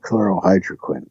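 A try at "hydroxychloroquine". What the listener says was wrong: Hydrochloroquine. Yeah. Hydro first.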